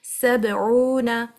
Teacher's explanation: Or the end of the ayah, but you're not applying the stopping, you continuing to the next ayah, means you joining the two ayahs together. In this case, the sound of the qalqala will be reduced. So the clarity or the loudness will be reduced due to a letter being read straight after the qalqala letter. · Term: Qalqala sughra